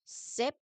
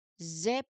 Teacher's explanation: Say the words sip and zip one after another. Sip, no vibration. Zip, there are vibrations.